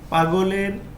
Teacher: পাগলের গ হলো ঘোষ অল্পপ্রাণ ধ্বনি